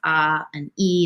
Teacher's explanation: It's a diphthong. It's a combination of two vowel sounds, ah and e.